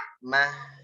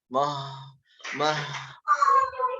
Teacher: Ngalirnya tipis ya, karena ha tipis.